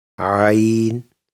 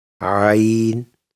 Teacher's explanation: For Ayin the tongue moves back towards the throat and sound comes from there